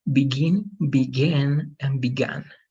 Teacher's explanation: the ah is going to be more like e and the U is so it's going to be begin begin